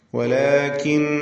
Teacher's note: അല്ലാഹ് എന്ന ഇസ്മുൽ ജലാല ഇതിലുള്ള ലാമിനെ തഫ്ഖീം ചെയ്ത് തടിപ്പിച്ചുച്ചരിക്കുകയാണ് വേണ്ടത്. വലാകിന്നല്ലാഹ, ഇസ്മുൽ ജലാലയിലെ ലാം തൊട്ടു മുമ്പിൽ ഫത്ഹ വന്നതുകൊണ്ടാണ് അങ്ങനെ തഫ്ഖീം ചെയ്യുന്നത്.